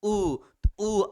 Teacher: आप उ बोलेंगे तो आपका ओठ देखिएगा उसका आकार चेंज हो जाएगा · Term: ओष्ठ वर्ण